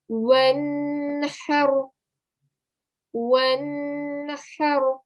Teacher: Ha, sound comes from the middle of the throat. And just to point out at the end, since we're pausing here, the ra is the letter that we're pausing at.